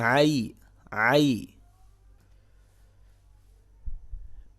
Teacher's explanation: یا ساکن سے پہلے زبر ہے، لہٰذا یہاں پر لین کریں گے، تھوڑا سا کھینچ کے پڑھیں گے